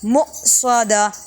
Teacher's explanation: حمزہ ساکن ہو تو جھٹکا دے کے پڑھا جاتا ہے